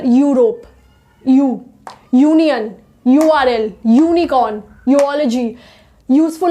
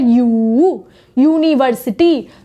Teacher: यू में हमारा जो ये लिप्स है इसका इस्तेमाल हो रहा है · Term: यू का साउंड